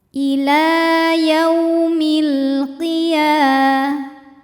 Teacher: Cara membaca huruf ya ini adalah dipanjangkan 2 harokat. · Selanjutnya ada hukum alif lam yang dinamakan dengan alif lam qamariyah sebab alif lam menghadapi huruf qamariyah yaitu qaf. Cara bacanya, lam dibaca dengan jelas atau dinamakan dengan izhar qamari. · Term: mad tabi'i muqaddar